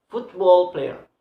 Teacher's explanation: football must have a stress, but in the first syllable. So football player. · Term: word stress